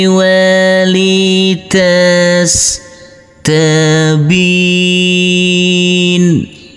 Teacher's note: Wa kadzalika nufassilul ayati walitastabin. Huruf ba di sini karena bertemu dengan huruf ya yang bersukun dan kita wakofkan, maka boleh kita baca dengan panjang 2, 4 maupun 6 harokat